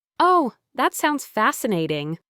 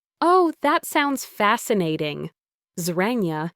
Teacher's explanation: If he had said it with a bright, rising, excited tone · the flat, slightly lower and extended tone on fascinating completely flipped the meaning to sarcasm